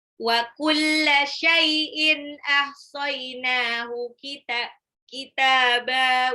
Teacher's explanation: tanwin ketemu alif itu izhar, dibaca jelas tanpa gunnah.